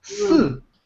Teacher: That means the fourth tone in Chinese language, which means you need to the tone goes down directly, drops.